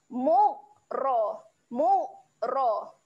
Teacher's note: huruf ra tempatnya adalah hujung lidah sentuh busi atas okey ro ro waktu sebut ro tu lidah hujung lidah kita · Beza eh makhraj dua-dua huruf ni, satu huruf ghain di tengah di hujung kerongkong dan huruf ra tempatnya adalah hujung lidah sentuh gusi atas.